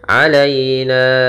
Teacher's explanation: Maka na-nya kita panjangkan 4 harokat. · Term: mad jaiz munfasil